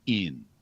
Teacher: people noticed quickly that I was so-called dropping my G's, which really amounts to nasalizing the ing suffix, so it becomes in.